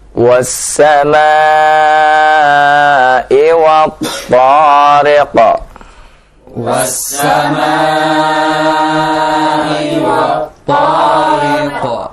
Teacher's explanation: Perhatikan huruf ta, ya. Huruf ta ketika kita baca, ya, tidak memonyongkan kedua bibir kita, ya. Karena isti'la itu dihasilkan bukan dari memonyongkan kedua bibir, akan tapi isti'la itu dihasilkan dari irtifa' aqsal lisan, dari naiknya pangkal lisan